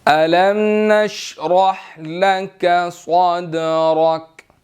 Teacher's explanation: دال حروف کلکلہ میں سے ہے اور را بھی موٹا ہے